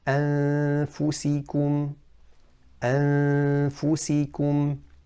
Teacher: We didn't say anfusikum, we didn't say an, that would have been idghar. We didn't touch the makhraj of noon with the tongue, and we didn't say affusihim or affusikum. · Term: ikhfa